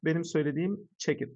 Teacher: Check ve it kelimeleri arasındaki konson dediği ünsüz ve sesli bağlantısı doğal bir şekilde yapılmış.